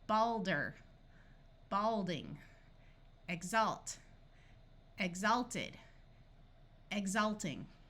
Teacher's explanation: we can add suffixes and the a will retain the broad a sound